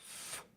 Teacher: The tip of the tongue going to the cutting edge of the upper teeth. This is another fricative sound. Air passing through is part of the sound. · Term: unvoiced sound